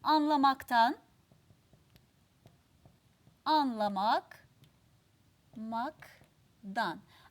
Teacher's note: başlayan bir ek almış sözcüğünü anlamak sözcüğümüz kes sesi kendine benzetiyor D sesini ve yumuşak ünsüzü T sert ünsüzüne dönüştürüyor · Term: ünsüz benzeşmesi